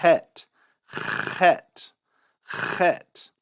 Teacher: Some people pronounce the chet with a trill.